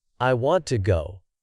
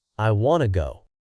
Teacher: Want is stressed, but to is unstressed and almost sounds like ta.